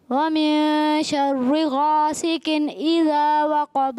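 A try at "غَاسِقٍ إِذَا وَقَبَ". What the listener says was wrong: غاسق، قاف موٹا. غاسق اذا وقب.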